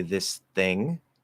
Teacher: So you do an S and then you do a dental T for the TH. Very, very common, because remember, the dental T and D will very commonly replace the TH sounds.